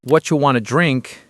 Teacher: What do you became whatcha, and want to became wanna. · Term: reduced form